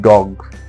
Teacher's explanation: D, voiced, alveolar, plosive, as in dog